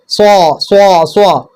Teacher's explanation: നാവിൻ്റെ കൂർത്ത അറ്റവും താഴെയും മേലെയുമുള്ള മുൻപല്ലുകളുടെ ഇടയും. ഇതാ 2 മുൻപല്ല്, ഈ 2 മുൻപല്ലിന്റെ ഇടയിലേക്ക് നാവിനെ കൊണ്ടുവരിക. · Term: സ്വാദ്